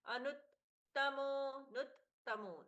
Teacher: नु पर त का सुंदर आघात है